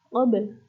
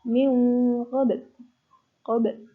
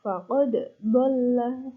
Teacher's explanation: ada qalqalah, artinya memantul. Jadi membacanya itu dipantulkan hurufnya yang bersukun.